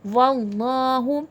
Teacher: واللہ، دیکھیں اب یہاں پر اللہ جلالہ سے پہلے زبر ہے، اللہ جلالہ لفظ تفخیم کر کے موٹا کر کے پڑھا جائے گا